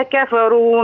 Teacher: والراء في كفروا تفخم